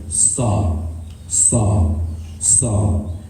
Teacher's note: that squeaky type of whistling sound is just a natural result of the position of your tongue and the tip of your tongue, how it is close to your two bottom front teeth.